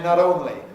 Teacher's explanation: Americans say not only, voicing it.